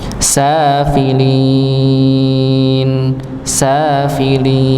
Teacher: sinnya dibaca Dua dua harakat